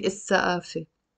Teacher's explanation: So السقافة, you see, I'm not saying السقافة because the fa here is a sun letter, so we don't pronounce the lam